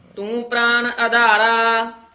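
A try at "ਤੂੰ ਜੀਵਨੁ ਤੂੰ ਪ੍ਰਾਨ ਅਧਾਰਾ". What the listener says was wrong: ਤੂੰ ਨਾ ਨੰਨਾ ਜੀਵਨ ਨਾ ਨਹੀਂ ਬੋਲਣਾ, ਜੀਵਨ ਨੰਨਾ ਨਾਸਕੀ ਹੈ। ਤੂੰ ਜੀ ਤੇ ਵੀ ਬਿੰਦੀ ਲਾ ਦਿੱਤੀ ਹੈ।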